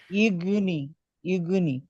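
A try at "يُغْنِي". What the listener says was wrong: ইউগনি। হ্যাঁ, নিকে টান দিতে বললাম তারপরেও।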